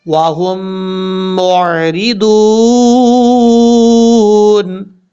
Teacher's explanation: ہا کو جس میم کے اوپر شد ہے اس میم کے ساتھ کنیکٹ کریں گے، بیچ میں جو میم ساکن ہے یعنی جس میم کے اوپر جزم ہے اس میم کو چھوڑ دیں گے ، اور میم کو عین سے جب ملائیں کہ جھٹکا نہیں